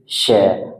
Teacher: जैसे ही हम इसको बोलते हैं हम जीभ को ऊपर की ओर मोड़ लेते हैं जिससे कि जो अंदर मुख से हवा निकल कर आती है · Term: ऊष्म संघर्षी व्यंजन